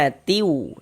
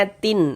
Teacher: bunyi tanwinnya dimasukkan ke huruf wau. Ini kita baca atiu. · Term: idgham bighunah